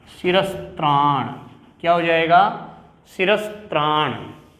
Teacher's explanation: दंती शकार यानी जिस स का उच्चारण स्थान दांत है